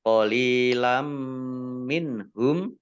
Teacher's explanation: Qalilam minhum, lam kasroh ya sukun mat tobi'i. Kemudian fathah tanwin bertemu dengan huruf mim, bacaan idgham bi gunnah, masuk dengan mendengung, yaitu mendengung mim, ditandai mimnya ada tasdidnya.